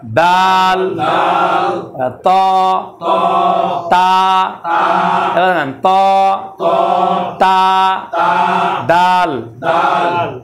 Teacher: দাল উপরের দাঁতের গোড়ার সাথে শুরু হবে, ওখানে গিয়ে শেষ।